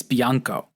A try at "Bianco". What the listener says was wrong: Blanco. Yeah, it's an L, not an I.